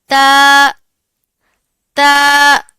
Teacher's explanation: जब जुबान की नोक और ऊपर वाले सामने के दो दांतों की जड़ों से लगेगी तो ता अदा होगा · جب زبان کی نوک اور اوپر والے سامنے کے دو دانتوں کی جڑوں سے لگے گی تو تا ادا ہوگا۔